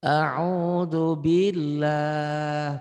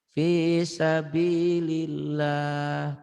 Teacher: Yang tarkik yang tipis. Lafaz Allah dibaca tarkik tipis berbunyi Allah ya. Berbunyi A bila didahului oleh huruf yang berbaris kasrah tuh.